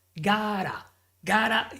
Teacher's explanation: Gotta using the flap T.